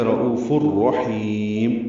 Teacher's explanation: رؤوف میں را پر پڑھیں گے، او واو مدہ ہے، 2 حرکات لمبا کریں گے. تنوین کے بعد را آنے کی وجہ سے ادغام ہوگا، یہ ادغام کامل ہے. رؤوف الرحیم، را پر پڑھیں گے، ہا کو لمبا کریں گے، وسط الگ سے ادا کرتے ہوئے میم ساکن پہ اظہار ہوگا وقفہ.